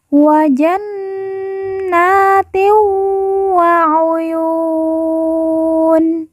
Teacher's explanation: Wa jannatin wa uyun. Kemudian tin bertemu dengan huruf wawu, maka tanwin dilemburkan, langsung masuk huruf wawu, kemudian ditekan, ditahan 2 harokat dan didengungkan.